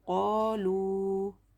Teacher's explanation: आगे देखो, क़ाफ अलिफ ज़बर क़ा, अलिफ मद्दा, एक अलिफ के बराबर खींच कर पढ़ेंगे। लाम वाव पेश लू, वाव मद्दा, दोनों को भी इक्वल खींचेंगे